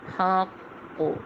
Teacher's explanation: کلکلا ہو رہا ہے، ٹھیک ہے، کلکلہ اکبر ہو رہا ہے کیونکہ قوف اور تشدید دونوں حالتوں میں، ٹھیک۔